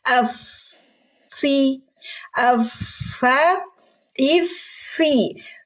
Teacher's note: huruf Fa keluar dulu napas kita baru harakatnya